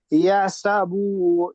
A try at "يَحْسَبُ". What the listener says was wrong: বা টান হয়ে যাচ্ছে, ইয়াহসাবু। বা একদম টান হবে না।